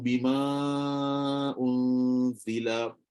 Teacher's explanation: Kalau kita baca sambung, bima unzila, baru jadi 4 harakat, jadi mad jaiz.